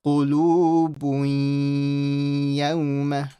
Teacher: So I'm going to read qulubun, but I'm going to join the bu to the ya with a shadda. And whenever I join to a ya with a shadda, I merge with ghunna.